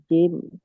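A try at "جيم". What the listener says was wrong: জিম, বেশি করে টান দিয়ে বলেন।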